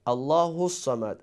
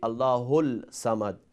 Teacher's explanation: So you see in Surah Al-Ikhlas we have Sad with shadda. So we have to pronounce Sad two times. And we don't pronounce lam. So lam here is one of the letter of wali.